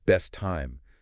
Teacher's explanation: the t at the end of best links to the t at the beginning of time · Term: linking with consonants